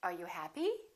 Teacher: with yes no questions the intonation goes up